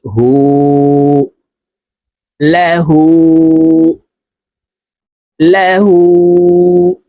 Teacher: উল্টা পেশের কাজ হলো উপরের দিকে ধাবিত করে ঠোঁট গোল করে এক আলিফ টেনে পড়তে হয়